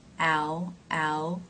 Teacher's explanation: This phrase begins with the ow as in now diphthong, ow, ow, and it then has the T.